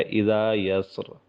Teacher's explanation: جب وقف ہوگا تو اس را کو موٹا پڑھنا چاہیے ، کیونکہ یا جو را سے پہلے سین ہے اور سین